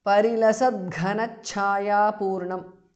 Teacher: Ghana, gha and chaya, cha are mahapranah.